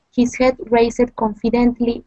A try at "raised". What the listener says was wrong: Great. Raised. His head raised. It's one syllable.